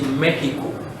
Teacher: So it's the same spelling, just that it has an accent on the E. But the X is produced as he, not X.